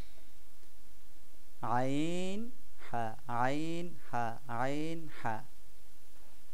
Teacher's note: কণ্ঠনালীর যে মাঝ স্থানটা আছে ওইখান থেকে আমরা এই দুটিকে উচ্চারণ করব এবং এটা উচ্চারণের সময় আমাদের আওয়াজ একটু ডিপ হবে